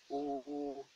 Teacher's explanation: If the letter wow with sukun comes after an alphabet with dhamma, then this wow, which is called wild madda, will be pronounced like double dhamma, ooh, ooh. And this ooh is pronounced like the vowel of food